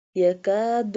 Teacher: Kaf, this one kaf pronounced softly, pronounced from the root of the tongue touching the hard part of the palate.